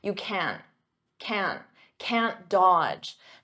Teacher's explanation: Now notice can't. In spoken English, I'm not going to pronounce that hard can't with the T.